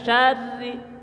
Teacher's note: kalau ro berbaris kasrah maka ro dibaca tipis dibaca tipis ya suara tipis bibir ke bawah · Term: ro tipis